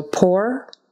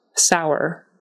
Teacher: Put these two here because they are spelled, both of them with an OUR on the end, but as you can hear, we pronounce them differently. Pour is pronounced as if it was just an OR, and sour is pronounced as if it were a OWER kind of thing. So pour, sour.